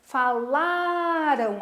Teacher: As palavras que terminaram em AM, falaram, são paroxítonas, porque a segunda sílaba de trás para frente, né? A penúltima é a sílaba forte, a sílaba tônica.